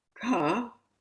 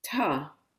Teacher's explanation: ca where you have your tongue going up and ta where your tongue is touching your teeth